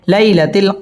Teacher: লাই জবরের বাম পাশে লিনের হরফ তাড়াতাড়ি পড়তে হবে